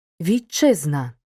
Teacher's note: як довгий ць по-особливому вимовляємо Т перед наступними шиплячими і свистячими перед шиплячим вимовляємо як ч